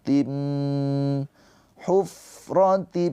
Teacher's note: Dibacanya tanwinnya dileburkan ke huruf mim ditahan dua harakat dengan dengung. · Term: idgham bighunah